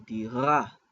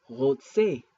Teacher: is pronounced with the back of the throat like a French R, but sometimes it's rolled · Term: Resh